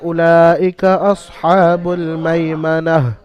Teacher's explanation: এখানে যেহেতু আপনি আয়াতের শেষে থামছেন, ওয়াফ করছেন, তো এখানে তাটা কেটে কি হা সাকিন করে পড়তে হবে। তাটা কেটে দিয়ে হা সাকিন করে পড়তে হবে